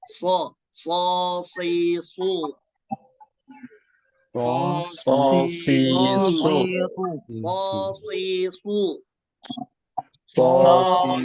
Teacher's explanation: So itu keluarnya dari ujung lidah. Dengan mana? Seri bawah.